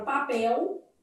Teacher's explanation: elas consideram que esse L pode ser lido com som de U. Então, uma banca assim, ó, ela vai pegar a palavra papel e ela vai entender que nesse finalzinho aqui, ó, para essas bancas elas vão entender que há um ditongo fonético. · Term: vocalização da letra L